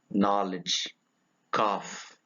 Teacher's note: Low back lax vowel.